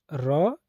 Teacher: जिनके उच्चारण में जीभ तालु से लुढ़क जाए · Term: लुंठित व्यंजन